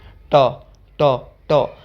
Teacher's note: तो ट और ठ आपके मूर्धन्य व्यंजन हैं। क्योंकि इनके उच्चारण में जो हमारी जीभ है ना वो मुर्दा को छू रही है लेकिन झटके के साथ नीचे नहीं गिरती।